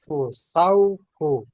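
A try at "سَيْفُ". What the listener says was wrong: সয়ফু, সৌফু হবে না, সই।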